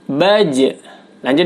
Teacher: ketika gym sukun maka dipantulkan karena gym merupakan huruf Qalqalah